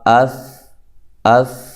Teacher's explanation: اس کی آواز آخر میں ہلتی نہیں ہے، اس کی آواز آخر میں ہل رہی ہے، ٹھیک ہے۔